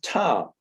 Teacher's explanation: the uh vowel in tom is phonated it's a vowel right the m sound is a nasal it goes through the nose what you have is a voiceless voiced voiced sequence so the